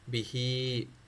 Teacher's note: با کے نیچے زیر ہے، بی، ہا کے نیچے کھڑی زیر ہے، صرف ہی کو کھینچنا ہے، با کو نہیں کھینچنا، ہی نیچے آ رہی ہے، ایک الف یا کے ذریعے برابر اپنے کھینچنا ہے، بھی ہی، یہ دراصل یعنی یا مدی کے برابر ہے، بھی ہی۔